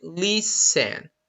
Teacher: for example you don't pronounce the t t is silent you say lis sen don't say listen